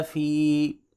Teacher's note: یدخلون، فا زیر یا فی، یا مدہ ہے، پہلے زیر ہے، یہاں پہ 1 الف کے برابر اس کو لمبا کریں گے۔